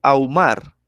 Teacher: la H intermedia yo no la pronuncio, mejor dicho, la H es muda